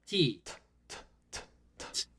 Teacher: no vibration right again this is because T is an unvoiced consonant · T, for example, is an unvoiced consonant. Try making a T sound while putting your fingers against your throat.